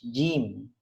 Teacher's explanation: Berbeda dengan huruf J. Kalau J yang biasa kita sebut dalam bahasa Jawa, J itu lidah kita di depan. Padahal jim itu di tengah. Posisi lidah bagian tengah pada posisi langit-langit bagian atas. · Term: huruf jim